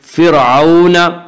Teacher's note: फ़िरऔन की रा को बारीक पढ़ेंगे। इसका कायदा यह है कि रा साकिन से पहले ज़बर और पेश हो तो रा साकिन को पुर पढ़ेंगे, रा साकिन से पहले ज़ेर आए तो रा साकिन को बारीक पढ़ेंगे, या रा साकिन से पहले फ़ा के नीचे ज़ेर है इसलिए रा साकिन को बारीक पढ़ेंगे।